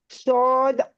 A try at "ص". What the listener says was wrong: ठीक है, ये सौद पे होंठ गोल नहीं करने हैं, ठीक है, नो, सौद, सौद सौद आइन